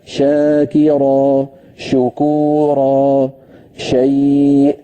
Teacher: شین کے مخرج کو ہم نے سنا کہ اس میں دیکھیں ایک سختی کے ساتھ سیٹی بھی تھی اور سختی جماؤ والے حروف میں سے، جیسے ہم نے جیم شین یا کا پڑھا، کیونکہ اس کا تعلق زبان اور تالو کے حصے سے آتا ہے.